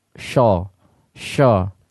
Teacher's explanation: Jadi pengucapan ini ada pengucapan yang salah. Ya, pengucapan yang salah ketika mengucapkan huruf shad seperti sho. Mengambil huruf shin tapi dengan merubah suara menjadi o.